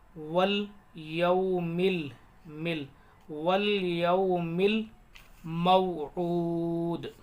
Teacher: والسماء ذات البروج، تا کو یا لام میں ملائیں گے، الف سائلنٹ۔ والیوم، میم کو یا لام میں ملائیں گے